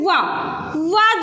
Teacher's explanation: वा जो वर्ण है इसका उच्चारण स्थान दंतोष्ठ माना जाता है